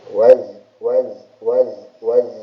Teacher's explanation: Ujung lidah berada di makhrajnya di belakang gigi seri bawah di sini ya. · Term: huruf zai